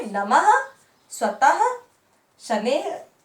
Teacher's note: विसर्ग कहते हैं। इसका उच्चारण वर्ण के बाद हा की ध्वनि के समान होता है, जैसे नमः, स्वतः, शनेः आदि।